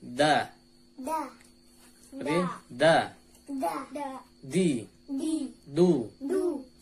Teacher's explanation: Dal ini makhrajnya sama dengan huruf ta, yaitu ujung lidah bertemu dengan pangkal gigi seri atas. Cuman bedanya di sifatnya. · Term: huruf dal